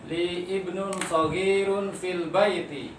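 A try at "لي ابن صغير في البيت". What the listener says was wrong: Mumtaz. Masya Allah. Qiraah jamilah.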